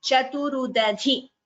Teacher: The second dhi is mahaprana.